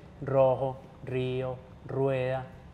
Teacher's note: si yo incluyo es así yo aprieto los cachetes un poquito estoy forzando a que el aire salga por la mitad y la lengua vibre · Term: la erre